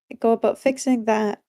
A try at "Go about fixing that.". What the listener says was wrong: Notice how you're saying, go about fixing that. You're pausing. Go about fixing that.